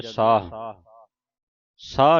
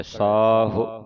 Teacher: ਸਾਹ ਸਾਹਾ ਸਾ ਹਾਂ ਇਕੱਠਾ ਹੀ ਪੜ੍ਨਾ ਸਾਹਾ ਦੈ ਸਾਹੁ ਇਹਨੂੰ ਵੀ ਸੰਗਤਾਂ ਕਈ ਪੜ੍ ਜਾਂਦੀਆਂ ਸਾਹ ਸਾਹ ਨਹੀਂ ਪੜ੍ਨਾ ਇਹ ਸਸੇ ਨੂੰ ਕੰਨਾ ਤੇ ਹਾਹੇ ਨੂੰ ਔਂਕੜ ਹੈ ਸਾਹੁ ਇਸ ਤਰ੍ਹਾਂ ਸਾਹੁ ਹਾਹੇ ਨੂੰ ਔਂਕੜ ਪੂਰਾ ਉਚਾਰਨਾ